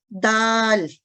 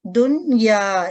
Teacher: جب زبان کی نوک سامنے والے اوپر کے 2 دانتوں کی جڑوں سے لگے تو حرف دال ادا ہوتا ہے. تو جب آپ دال کو ادا کر کے دیکھیں تو آپ کے اوپر والے 2 دانت استعمال ہوتے ہیں اور ان کی جڑ دال.